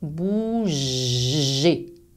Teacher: le verbe bouger, il y a une vibration. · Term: son j